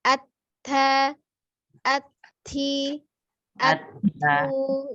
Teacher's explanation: huruf ta ada alhamz atau udara yang mengalir ya ketika mengucapkan huruf ta